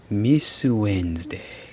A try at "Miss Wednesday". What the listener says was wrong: Miss Wednesday. there's an extra syllable to her name.